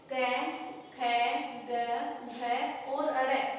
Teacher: क वर्ग के वर्ण जिसमें क, ख, ग, घ, ड़ है और विसर्ग, इन वर्णों का उच्चारण हम हमारे शरीर में कंठ की सहायता से करते हैं